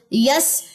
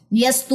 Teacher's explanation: سین حروف صفیر میں سے ہے، اس میں سیٹی پائی جاتی ہے. یس کیونکہ اس میں ثنایا سفلا انوالو ہے، نیچے کے 2 دانت انوالو ہیں.